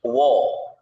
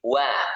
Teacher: Kalau tebal tuh jadi wo. Wo kalau tipis wa